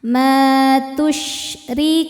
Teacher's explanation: syinnya punya ciri khas ya. Sifat tafasyi menyebarkan angin di dalam mulut. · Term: sifat tafashi